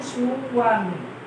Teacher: অন্তস্থ বতে অবশ্যই ওয়া, ইংলিশ ওয়া মানে বাংলায় ওয়া ওয়া ওয়া যে কোনোভাবে আসতে পারে। যখন ওয়া ইংলিশে ওয়ার মতো উচ্চারিত হবে তখন সেটি কি হয়ে যাবে অন্তস্থ।